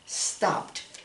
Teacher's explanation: P is a voiceless sound, so you want to make it sound like a T afterwards.